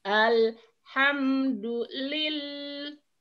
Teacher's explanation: Alif lam qamariyah. Intannya upami al-qamariyah mah jelas, idharul qamariyah jelas. Alnya diserat sareng diaos.